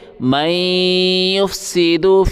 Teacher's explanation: نون نہیں پڑھیں گے، میم کو یا کے ساتھ ملائیں گے